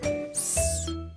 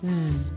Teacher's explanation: These 2 sounds are paired together because they take the same mouth position. S is unvoiced, meaning only air passes through the mouth. And Z is voiced, meaning you make a sound with the vocal cords. Z. To make the sounds, the lips part and the corners pull back a little while the teeth themselves lightly touch.